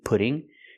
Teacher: the double T pronounced as a fast D